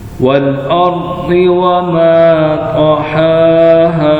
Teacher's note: हा को अलिफ की वजह से खींचेंगे, हा को खड़ी जबर की वजह से, दोनों को खींचना है।